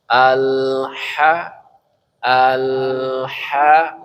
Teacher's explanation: Udaranya biar mengalir. Salah satu sifat ha itu adalah hamas. Udaranya mengalir ya.